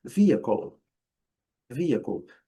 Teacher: esse L vai ser pronunciado como eles chamam de dark L, que é o L no céu da boca, a língua no céu da boca